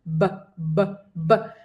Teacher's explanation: hago como un pequeño golpe del labio de arriba con el labio de abajo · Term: B corta